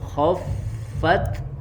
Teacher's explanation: Khoffa ya, fa-nya mengalir suaranya ya, dan juga anginnya berhembus, kemudian fa-nya disempurnakan makhrajnya ya, bibir bawah bagian perutnya ke ujung gigi seri atas